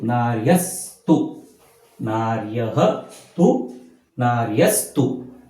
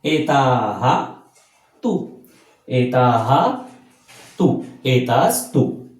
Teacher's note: हा जो विसर्ग आहे याचा स होत असतो